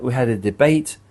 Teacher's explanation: so the final t sound is glottalized for the word debate. So this makes the word sound like it ends in a sudden stop or pause.